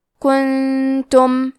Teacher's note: کلمت کنتم میں نون ساکن ہے، پھر حرف تا ہے، تا حروف الاخفاء میں سے ہے تو ہم یہ حکم کو غنہ کے ساتھ ادا کریں گے